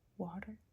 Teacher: It's almost like a D, but it just barely your tongue just barely taps the roof of your mouth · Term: flap, alveolar tap